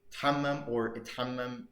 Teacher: But some people, I mean, it's kind of optional. Some people insert an initial alif to kind of make it easier to pronounce, like create a sort of independent syllable.